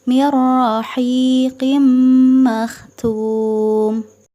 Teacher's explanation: maka memasukkan nun mati ke dalam huruf ra tanpa dengung. Mirra, mirra, tidak ditahan, tidak dengung. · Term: idgham bila gunnah